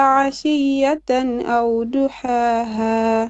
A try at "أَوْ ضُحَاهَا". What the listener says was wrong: Your dot, try to make them more heavier. أو ضحاها. Correct.